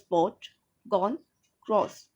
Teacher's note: This vowel is not quite fully back and between open, mid and open in tongue height. The lips are slightly round.